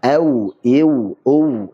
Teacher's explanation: Meskipun ini tempat keluarnya sama yaitu dari dua bibir sekaligus, tapi pengucapannya beda. Kalau waw dia dua bibir tidak ada dia ada celah, maksudnya tidak nempel, kemudian monyong.